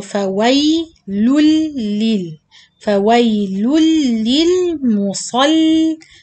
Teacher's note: This ya is not much, so don't say فوي. It's not too long. Only رخاوة timing.